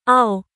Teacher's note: এ হরফ উচ্চারণে দুই ঠোঁট সরাসরি মিলিত হয় না, বরং উভয় ঠোঁট ডান ও বাম পাশ থেকে গোল হয়ে অর্ধফোঁটা ফুলের মতো মধ্যস্থলে ছিদ্র রেখে উচ্চারিত হয়। যেমন আও, দুই ঠোঁট। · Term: ওয়াও